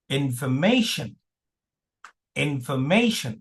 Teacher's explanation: R is not pronounced at all